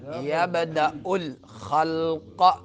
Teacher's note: تو اس میں آپ نے کیا قلقلہ کرنا ہے، جنبش کرنی ہے آواز نے۔ یبدأ الخلق، قاف کو پر پڑھنا ہے۔